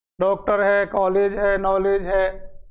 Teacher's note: आ और ओ के मध्य की ध्वनि हमें निकालनी है।